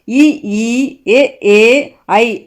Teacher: இ ஈ ஏ ஏ ஐ ஆகிய 5ம் வாய் திறக்கும் முயற்சியுடன் நாக்கின் அடி ஓரமானது மேல்வாய் பல்லை பொருந்தும் முயற்சியால் பிறக்கின்றன